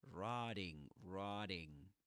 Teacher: This flap T, flap T in American English